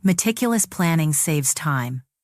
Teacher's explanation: Stress meticulous, stress saves, stress time.